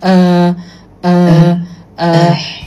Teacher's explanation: Hamzah fathah dia bunyi dia relaks walaupun kita punya vokal kod kita tertutup tapi bunyi dia sangat relaks kan.